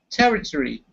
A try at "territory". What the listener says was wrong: So rather than emphasizing every single syllable, we squish up the last part so it becomes like tree, territory.